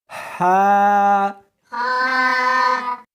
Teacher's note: اس کو حلق میں سے نکالنا ہے اور ساتھ میں ہوا بھی ہونی چاہیے